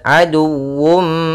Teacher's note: dalam mim mati bertemu ain, kita baca dengan bacaan izhar syafawi, suara mimnya harus jelas. Kemudian aduwwum, nah, di sini harus dibaca juga dengan sempurna wawunya dengan tasydid.